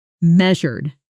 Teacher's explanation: Stress on the first syllable, and that middle sound is like zhur, similar to composure.